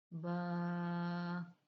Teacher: दोनों होठों के तर हिस्से से अदा होगा